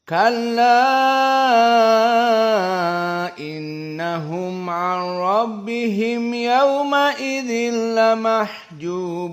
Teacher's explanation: Maka ini menjadi makna jaiz, yakni boleh ditambah dari tawassut menjadi 6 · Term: al-isba'